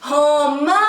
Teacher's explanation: romã tem 2 sílabas e a sílaba tônica é o mã